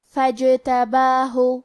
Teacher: کلمت فجتباہ میں کیونکہ یہاں جیم پہ جزم ہے تو یہاں ہمیں جیم کو قلقلہ سے پڑھنا ہے، اور قلقلہ کا معنی ہے حرف ساکن کو ہلانا، تو ہم جیم کو ہلاتے ہوئے یہ کلمہ کو پڑھیں گے